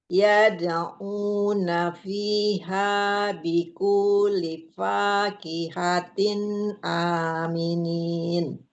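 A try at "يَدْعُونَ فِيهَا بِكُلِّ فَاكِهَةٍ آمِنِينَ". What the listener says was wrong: Bikullifa, lamnya tasydid. Bikullifa.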